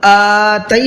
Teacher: جب حمزہ پہ کھڑا زبر ہوتا ہے تو اس کو کھینچتے ہیں، اور جب کھینچیں گے تو تھوڑا سا ساؤنڈ ہمارا بڑھے گا اس میں